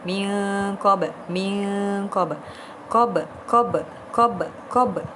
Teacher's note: nun sakinah bertemu dengan qaf. Hukum dia adalah ifa hakiki dan dibaca dengan dengung. Min qab, min qab, qab, qab, qab, qab.